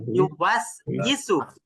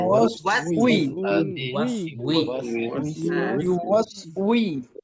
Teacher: ওই ই বললে ওটা ওয়াও না, ওটা হামজা হয়ে যায়। তো ওয়াও জের কি হয়? উই, মুখটা গোল করে উই